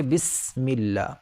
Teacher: جب سین کہیں گے تو ایک سیٹی کی آواز نکلے گی، جیسے سین، جیسے بسم اللہ کے اندر ہے، یہاں پر یہ بسم اللہ میں سین ہے، تو یہ اس کو ہم سا کی طرح نہیں پڑھ سکتے، غلط ہو جائے گا، ایسے نہیں پڑھ سکتے، بلکہ بسم اللہ۔